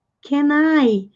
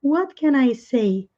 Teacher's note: em termos de pronúncia, o N emenda com o I.